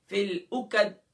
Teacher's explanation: اکد عین کو گلے کے مڈل سے ادا کریں گے وسط حلق سے، قوف کو اس کے مخرج سے ادا کریں گے، یعنی زبان کی جڑ و تالو کے نرم حصے سے